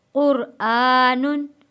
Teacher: क्योंकि आगे हरूफे हल्की आ गया है, हमज़ा हरूफे हल्की है, इसलिए यहाँ अब हम गुन्ना नहीं करेंगे।